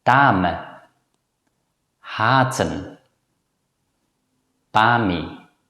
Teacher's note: when the vowel [a] is pronounced, the mouth is wide open and the lips don’t protrude · it’s usually pronounced as a long vowel [a], which is the pronunciation of the letter “a” itself